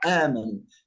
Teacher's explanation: لكن أبدلنا الهمزة الثانية حرف مد حتى يكون النطق سهلا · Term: مد البدل